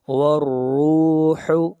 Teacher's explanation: را کو موٹا پڑھیں گے، را کے اوپر پیش ہے۔ الیہ فی یوم، فی یوم کان، یہاں پر تنوین کے بعد نہ حروف حلقی ہیں نہ حروف یرملون ہیں اور نہ حرف اقلاب با ہے، تو اخفاء حقیقی ہوگا۔